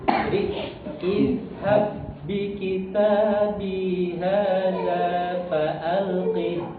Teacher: Tapi izhab. Kemudian huruf ba bertemu ba itu kan idgham mutamatil lain nih. Maka dia qalqalahnya itu hilang Pak, hilang. · Jadi huruf yang pertama sukun itu seakan-akan jadi nggak ada.